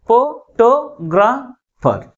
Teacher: second syllable is pronounced with a greater force comparing with other syllable